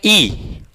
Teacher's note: ई में क्या हमारा ओठ गोलाकार हो रहा है क्या, ई नहीं ना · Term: अवृत्तमुखी स्वर